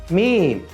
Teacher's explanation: মিম হরফ উচ্চারণের সময় কি হবে আমাদের দুই ঠোঁট একসাথে লেগে যাবে